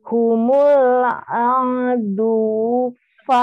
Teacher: Tapi jangan dipanjangkan nih. Jangan di wu begitu. Wunya pendek saja.